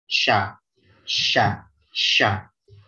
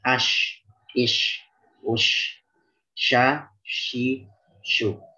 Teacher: Jim dan shin itu dia berada di tengah lidah.